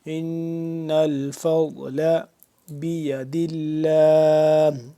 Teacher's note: نون مشدد ہے, اس پہ ہم کریں گے غنہ